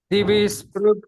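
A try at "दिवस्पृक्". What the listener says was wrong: Only one small observation. It is not Divispruk, it is Diva. Divaspruk Sarva Drigvyasah.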